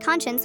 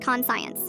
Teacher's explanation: It is pronounced conscience with a sh sound, not con science.